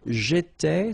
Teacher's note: so final S not pronounced